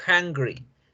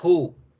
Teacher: Es una consonante glotal. Se genera acá, en las cuerdas vocales. Por supuesto, no genera vibración.